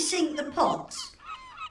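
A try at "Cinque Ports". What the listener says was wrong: Not sink, sank. C-I-N-Q-U-E. It means five in French. And it's ports, not pots.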